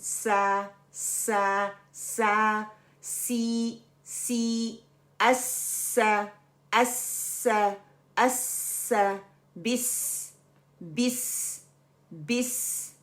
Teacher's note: अब हम थोड़ा सा सीन के मखरिज को भी देख लेते हैं कि ज़बान की नोक को सामने के नीचे वाले दो दांत जो है ना उसके किनारों से मजबूती से लगाने से अदा होता है, जैसे सीन फतहा अलिफ सुकून, सा सा सा, सी सी, अस्सा अस्सा अस्सा, बिस बिस बिस।